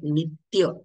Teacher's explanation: जिथे जोड अक्षर असेल तिथे तिथे जोड अक्षरापैकी जे पहिलं अक्षर असेल पहिला वर्ण जो असेल त्या वर्णावरती आघात म्हणजे म्हणजेच जोर देऊन उच्चारण करायचं आहे जसं नित्य त्य हे जोड अक्षर आहे दोन व्यंजन एकमेकाला जोडलेली